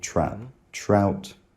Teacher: Ow starts with the trap vowel